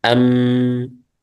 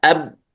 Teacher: أن الميم فيها غنة كما تنظرون من الخيشوم